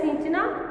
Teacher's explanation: तो यहाँ पर जो आवाज निकल रही है वो हमारी आवाज जो है ये नासिक के है, नाक के साथ निकल रही है